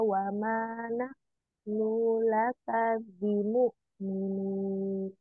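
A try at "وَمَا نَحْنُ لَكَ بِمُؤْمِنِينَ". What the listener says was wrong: Nunya jangan dipanjangin. Wa manahnu. Wa manahnu laka. Langsung ya. Nah, ini Hamzah boleh nanti ya, bimu minin gitu ya.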